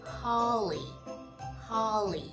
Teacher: Nhấn vào âm đầu tiên lên xuống